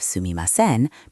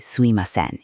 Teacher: instead of sumimasen, people say suimasen in casual speech. They drop sounds.